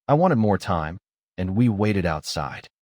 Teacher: Want ends in T, and wait also ends in T, so both past forms use the extra ID syllable. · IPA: /ɪd/